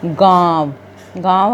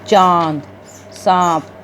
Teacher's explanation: इसका उच्चारण करते समय वायु नाक और मुख दोनों से बाहर निकलती है। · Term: अनुनासिक